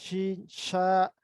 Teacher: اور ہوا اسی طرح، یعنی زبان اور تالو کے درمیان ایک چھوٹی سی خلا بچ جاتا ہے جس میں سے ہوا نکلتی ہے. شین، یہ وسط زبان، یعنی زبان کے درمیانی حصہ جب اوپر والے تالو کے ساتھ ملے گا تو وہاں سے شین